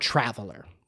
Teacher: where's the stress on traveler? On trav. It's on trav.